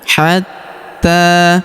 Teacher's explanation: Huruf ta kita tahan dan kita tekan karena terdapat tanda tasydid di atasnya. Hatta. Lalu kita panjangkan 2 harokat karena alif kecil di atasnya dan terdapat alif bengkok atau alif maksurah di depannya yang dianggap tidak ada ya.